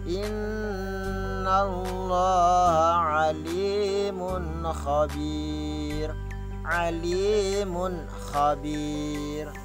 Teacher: Nah, ini putus, terang, jelas, nyata, tidak didengung. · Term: izhar